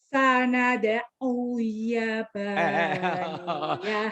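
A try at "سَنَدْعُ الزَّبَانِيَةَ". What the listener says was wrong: Orang Klaten, Yamania. Z atau zaitun, minyak zaitun atau bukan yaitun. Uzzabah, ayo lagi. Sanad uzzabah bukan Yamania. Penyakitnya Zai suka ke Y ya. Sanad uzzabaniyah.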